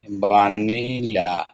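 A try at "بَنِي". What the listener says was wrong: বানি লানা নাই, লা নাই তো।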